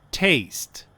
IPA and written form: teɪst (taste)